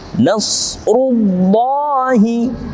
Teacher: Nasrullahi, lamul jalalah, kalimat Allah yang diawali sebelumnya dengan dhammah atau u, maka dibacanya tebal